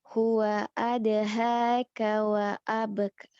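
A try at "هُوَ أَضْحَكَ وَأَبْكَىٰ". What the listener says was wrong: Pendek, hanya pendek, kanya juga pendek.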